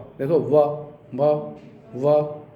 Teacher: वकार व जो है वह दंत और ओष्ठ इसका दोनों स्थान है। दंत से भी ओष्ठ से भी दोनों के संयोग से निश्चित होने वाला है व। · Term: दंतोष्ठ